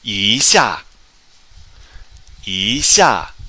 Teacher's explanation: This is the tone Sandy rule. When 一 is followed by a fourth tone character like it is here, it changes to second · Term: second tone